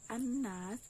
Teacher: alif lamnya itu enggak dibunyikan atau enggak disuarakan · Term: idgham syamsiah